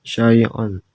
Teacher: Yang kedelapan syai'on mat iwat karena terjadi berhenti pada huruf yang berbaris fathah tain dan dibaca panjang 2 harokat